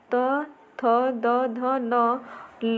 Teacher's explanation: जिनका उच्चारण ऊपर के दांतों पर जीभ लगाने से होता है उसे दंत्य कहते हैं